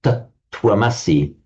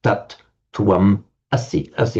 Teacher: So you would expect to find for thou art, you are, you would expect to find a C, but in fact it's not. One of the S's drops out, so irregularly it becomes a C, as in the well-known Vedic phrase, tat twamasi, that thou art, tat twam asi, asi with a single S.